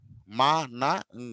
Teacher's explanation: As expected the air is stopped from going through the mouth and is redirected in to the nose. So గాలిని నోటి దగ్గర ఆపుతాము, కానీ వదిలేది మాత్రము ముక్కుతో వదులుతాం. · గాలి నోట్లో నుంచి కాకుండా ముక్కులో నుంచి వదులుతాం, వాటిని నాజల్స్ అంటాం. As expected the air is stopped from going through the mouth and is redirected in to the nose.